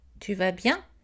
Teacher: Monter l'intonation à la fin de la phrase.